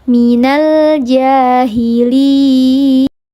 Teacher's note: Ada huruf jim yang harakatnya fathah berdiri, dibacanya panjang 2 harakat, namanya mad tabi'i muqaddar atau mad asli.